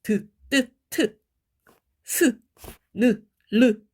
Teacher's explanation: 딱 윗 이빨 뒤에, 그지? 바로 있는 그 잇몸을 혀가 치면서 나는 소리예요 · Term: 치조음